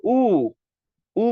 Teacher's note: উ বললে উ জিহ্বা উপরের দিকে যায়